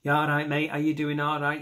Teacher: You make a nasal sound like you need an antihistamine. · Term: Mancunian accent